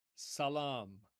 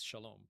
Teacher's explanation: But notice how in Hebrew, the first S becomes a sh. So S in Arabic, sh in Hebrew, and the long a vowel in Arabic becomes a long o vowel in Hebrew · So s in Arabic, sh in Hebrew, and the long A vowel in Arabic becomes a long O vowel in Hebrew. So it's essentially the same word, just with a different pronunciation to fit their respective languages.